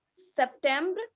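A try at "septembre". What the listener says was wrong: One is a to sound is not there. September nahi, September. To. September.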